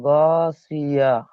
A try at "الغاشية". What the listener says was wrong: গশিয়া, ওটা শিন। গশিয়া।